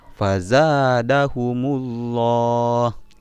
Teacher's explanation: lafaz Allah itu harus dibaca tebal karena didahului oleh harakat harokat dhommah